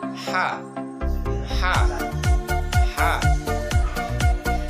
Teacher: tenggorokan bagian tengah sifatnya nafas berhembus lunak dan tidak tertahan atau road tidak dibawa istifal terbuka antara lidah dan langit-langit atas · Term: rokhawah